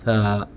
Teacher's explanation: یہ زبان کی نوک اوپر والے دانتوں سے لگا کر یہ حرف ادا ہوگا، بالکل نوک لگانی ہے، تھا۔ ہلکا سا زبان کا پیالہ بنے گا، لیکن جو ہے نا یہ زبان کی نوک کے ساتھ آپ کے اوپر والے دانتوں کے ساتھ ٹچ کرے گی تو یہ حرف پراپر ادا ہوگا۔